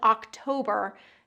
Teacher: That ending R, October, needs to be pulled back. We also want to make sure that we're getting that long vowel in the middle.